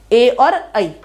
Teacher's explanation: कंठ और तालु से मिलकर बना है ए और आई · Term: कंठ तालु